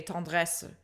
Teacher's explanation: if you were a French speaker speaking it, you would just say tendresse, and you don't pronounce that ending schwa. It's literally only in music that we do this.